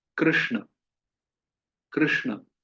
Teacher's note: जीभ को हमें मूर्धा तक लाना होगा, क्योंकि हमारी जीभ आलस करती है वहां मुड़ने में, इसलिए वो तालु तक सीमित हो जाती है। क्योंकि कृष्ण में जो र है और जो श है, वो दोनों ही तालब में है।